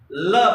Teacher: ल पार्श्विक व्यंजन है, क्योंकि दोनों बगल से आपके श्वास निकलती है बोलने से। ल बोलने से पार्श्विक माने पास से आपके मुंह के दोनों बगल साइड से ये सांस निकलता है, इसलिए ल को पार्श्विक व्यंजन कहते हैं।